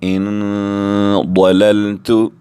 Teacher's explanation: نون ساکن کے بعد ضاد بھی حروف اخفا میں سے ہے، یہاں بھی ہم اخفا کریں گے، ناک میں آواز لے جا کر 2 سیکنڈ تک روکیں گے، کیسے؟ ان ضللت، ضاد حروف مستعلی میں سے ہم پر کر کے بھی پڑھیں گے، ان ضللت، پھر ہم دوبارہ یہ لائن پڑھیں گے، من سفیہ، من شکر، من صلصال، ان ضللت۔